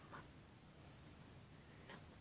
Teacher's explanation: all of the air comes out of the nose, pretty much